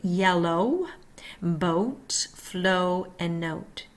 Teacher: Long O, tongue mid-back, mouth tense, lips round, heard in yellow, boat, flow, and note.